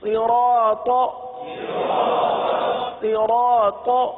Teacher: را کے ساتھ الف ہے، الف مدہ ہے، 1 الف تک کھینچ کے پڑھیں گے۔ طا پر زبر ہے، تو طا کو تو بغیر کھینچے پڑھیں گے ہی، لیکن طا کو پر بھی پڑھیں گے، کیونکہ اس کو ہمیشہ، اس حرف کو ہمیشہ ہم پر پڑھتے آئے، تو یہاں پر بھی پر پڑھیں گے تختی نمبر 10 میں۔